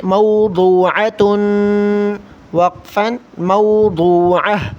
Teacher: اسی طرح یہ لفظ ہے موضوعۃ، موضوع، ضاد کو موٹا کرنا ہے، تا پر تا پر دو تنوین ہے یعنی کہ دو پیش ہے، اس لیے ہم غنہ کریں گے